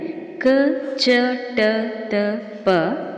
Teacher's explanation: ಕಡಿಮೆ ಅಥವಾ ಅಲ್ಪ ಉಸಿರಿನಿಂದ ಉಚ್ಚರಿಸಲ್ಪಡುವ ಅಕ್ಷರಗಳು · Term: ಅಲ್ಪಪ್ರಾಣ